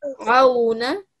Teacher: And this letter here is an ayn, okay? It's not a thick letter, but it's a special letter because you recite it from like the bottom of your throat